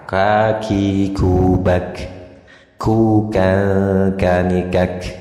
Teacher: kaf ada sedikit ngecesnya karena punya sifat hams gitu ya kira-kira